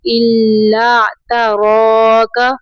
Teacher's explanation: تا کو باریک پڑھیں گے، را کو اوپر پڑھیں گے